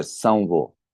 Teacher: And it is so it is not u or u, it is just denoting this nasalization before sound v or v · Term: nasalization of anusvara